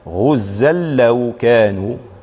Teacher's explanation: في حالة الوصل سنطبق قاعدة من قواعد النون الساكنة وهي هنا الإدغام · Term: إدغام بغير غنة